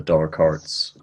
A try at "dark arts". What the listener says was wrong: Sorry, your accent. Yeah, it sounds like you're saying door cards.